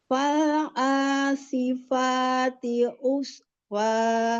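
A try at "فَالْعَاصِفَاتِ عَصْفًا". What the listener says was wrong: Huruf ain. Asfa. Oh, buka lagi ainnya. Fal asifati asfa. Asi. Asi. Tebalkan huruf sod. Fal asifati asfa.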